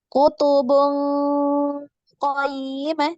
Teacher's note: Nah, hanya saja yang qaf ini naik, pangkal lidahnya naik.